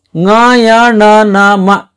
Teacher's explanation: ಈ ಅಕ್ಷರಗಳನ್ನ ಮೂಗಿನ ಸಹಾಯದಿಂದ ಉಚ್ಚಾರಣೆ ಮಾಡಲಾಗ್ತದೆ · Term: ನಾಸಿಕಾಕ್ಷರಗಳು